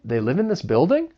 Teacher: Now as a question with a rising intonation, they live in this building?